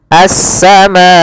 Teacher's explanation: Panjangnya 4 harokat atau 5 harokat. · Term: mad wajib muttasil